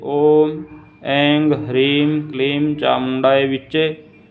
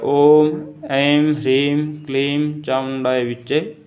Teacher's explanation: और जो तंत्रोक्त पद्धति है उसके अंदर जो प्रथम वर्ण है उसमें ओम ऐंग ह्रीं क्लीं चामुंडाय विच्चे ऐसा उच्चारण किया जाता है। तंत्रोक्त पद्धति में जो पहला अनुस्वार है उसको गा बोला जाता है और बाद में माँ का उच्चारण किया जाता है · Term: तंत्रोक्त उच्चारण